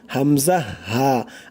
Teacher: 1 number মাখরাজ কণ্ঠনালীর শুরু হইতে উচ্চারিত হয়। 1 নাম্বার মাখরাজটাই কণ্ঠনালীর শুরু হইতে উচ্চারিত হয়, মানে গলার শুরু হইতে।